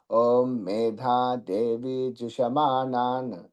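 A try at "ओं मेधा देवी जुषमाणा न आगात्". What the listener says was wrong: మేధాం సున్నా లేదండి, ఆగాతు ఘాలవుతు లేదు, ఆగాతు.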